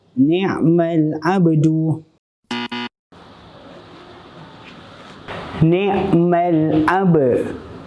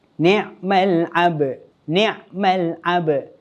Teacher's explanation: lantunkan huruf ba di pertengahan kalimah dengan lantunan qalqalah sughra